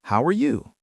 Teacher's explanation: Try to use a falling intonation for normal statements and a rising intonation for questions like, "How are you?" Your voice goes up at the end instead of a flat robotic voice